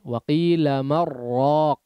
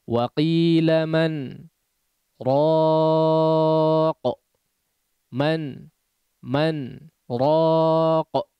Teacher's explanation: Harus disaktah sehingga ya dibaca izhar, jelas nunnya. Saktah adalah berhenti sejenak tanpa mengambil nafas ya. Tidak dibaca dengan idgham wa qila marraq ya.